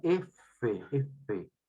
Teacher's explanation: mi labio inferior con mi incisivo superior se juntan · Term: labio dental